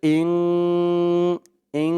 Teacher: এখানে ইকফা গুন্না হবে এই যে নুন সাকিনের পরে ইকফার 15 হরফের এক হরফ কাফ আসছে